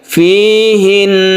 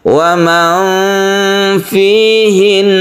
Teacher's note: Jadi tasydid nun itu tetap dibaca dengung meskipun dia itu waqaf. Jadi dipanjangkan.